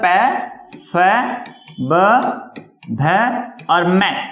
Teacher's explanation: प वर्ग प फ ब भ और म, इनका उच्चारण स्थल होता है वो क्या होता है, ओष्ठ होता है